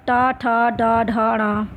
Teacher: टा वर्ग का उच्चारण स्थान मूर्धा होता है।